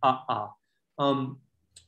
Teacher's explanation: When you write a double vowel in Hadza, it means that there's a glottal stop between it.